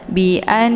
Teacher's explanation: Dzalika bi an, lika dua-duanya pendek, bi anna ini anna ada tasydid di huruf nun, namanya ghunnah musyaddadah, cara bacanya didengungkan. A-nya ditekan sambil ditahan lebih kurang 2 harokat sehingga terbentuk suara yang mendengung.